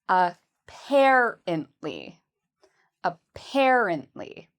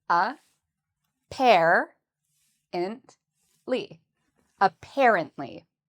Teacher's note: the second syllable is what we say with emphasis. So, it's the part we say louder and longer